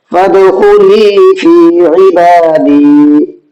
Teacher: با پر کھڑا زبر ہے، اس کو بھی کھینچنا ہے